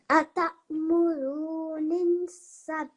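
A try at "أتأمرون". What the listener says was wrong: Have another look at what signs on top of this noon. Fatah. So how would I say this letter then? You said I think you said ni or nu.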